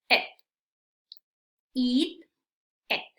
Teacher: este es un sonido más corto y más neutral es it es como si para esta palabra tienes que sonreír